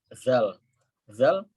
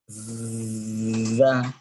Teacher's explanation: Zal, kita tahu nih, dia makhrajnya di situ, ujung lidah ketemu ujung gigi atas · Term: huruf zal